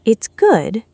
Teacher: letting her pitch fall on the word good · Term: fall rise